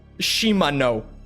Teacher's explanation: all 3 syllables of it get hard emphasis